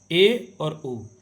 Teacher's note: अर्ध संव्रत में आधा मुख द्वार बंद रहता है, अर्थात मुंह आधा बंद रहता है